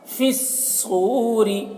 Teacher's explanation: صاد کو موٹا کر کے پڑھیں گے اور را کو باریک